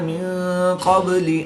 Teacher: نون ساکن کے بعد قاف حروف اخفا میں سے ہے تو یہاں پر بھی اخفا ہوگا، یعنی غنہ زمانی کر کے پڑھیں گے